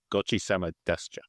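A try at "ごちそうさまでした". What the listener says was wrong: Okay, the last bit is wrong. And trail off the sama. You'd be like, gochi-sama.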